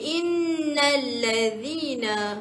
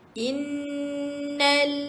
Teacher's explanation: Innal selepas tu bunyi na tu kita gabungkan terus dengan lam. Hamzah wasal tu tak perlu bunyi.